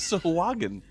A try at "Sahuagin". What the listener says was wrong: Emphasis on the wrong syllable.